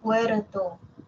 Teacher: solo tap, como un solo golpe